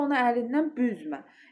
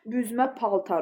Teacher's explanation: Yəni vurğu əgər əvvələ düşürsə, bu zaman felin inkarında olan sözdür.